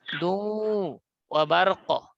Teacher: রা'দু, এখানে দাল ওয়াও দুই পেশ, দু, তাসদিদ দিয়ে মিলিয়ে পড়লাম আমরা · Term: ইদগামে বাগুন্না